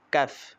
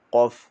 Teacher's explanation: কাফ পাতলা আওয়াজে কাফ আর কফ হচ্ছে মোটা আওয়াজে কফ